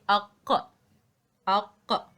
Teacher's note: You will find the top of your back of your throat and the back of your tongue come together when you make the aq sound. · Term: echo